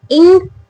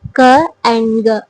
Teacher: the last part of the tongue just touching the behind part of the hard palate